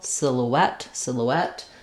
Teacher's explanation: Does also come from the French, and it does retain one element of the French, which is that we stress here on the et syllable, silhouette, silhouette, but the vowels are different and anglicized in this word.